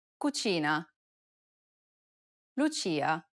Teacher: notice how the ch sound is more stressed in italian than it is in english · this sound is identical to the ch in church the only difference though is that it's stressed even more in italian than it is in english